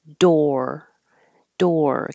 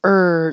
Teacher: hold your tongue in the r position door door keep making ER noise so that the r can be heard